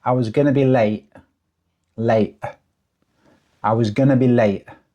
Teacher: Again, there's a glottal stop on the T in late.